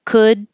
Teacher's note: the word could doesn't need to have a d or a t